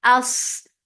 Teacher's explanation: As for fatha open jaws attached with sad, sad will get sifa of rakhawa, and it is heavy, and it has safir.